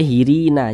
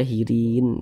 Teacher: Kita berhenti tepat di huruf nun. Huruf nun tidak dibaca panjang, makanya kita sukunkan.